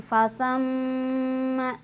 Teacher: Ini namanya gunnah, jadi ditahan dulu, berdengung dulu ya.